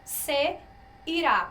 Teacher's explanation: o será tem a sílaba tônica na última sílaba. Então, a gente tem uma oxítona, não é?